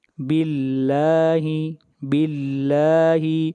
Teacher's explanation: یہاں پر لفظ اللہ کو باریک پڑھیں گے اس لیے کہ لفظ اللہ سے پہلے زیر ہے